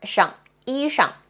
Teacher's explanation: the neutral tone, shang, like really light and short